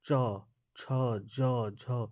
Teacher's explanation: तो हमारा जीभ जो है वो तालु में सटता है, जिस कारण इसको क्या बोलते हैं हम लोग, तालु। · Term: तालव्य